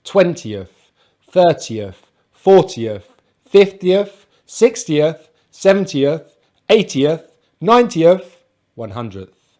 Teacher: t and then we have the schwa and the th but unlike the teens these big numbers we stress the first part of the number